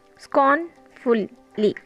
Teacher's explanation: scorn is stressed and full and li is unstressed.